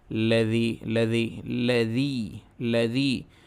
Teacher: ارأیت الذی، لذی یہ یا مدہ ہے، یا ساکن سے پہلے زیر ہے تو اس کی آواز اچھی طریقے سے معروف ادا ہوگی، نیچے جائے گی۔ اگر اسی کو ہم اوپر ادا کریں گے تو وہ صحیح نہیں ہوگی۔